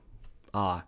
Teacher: even if you pronounce the sound ah in Russian, you kind of change it along the way. So the tongue position changes a little bit. And that's what we don't notice normally.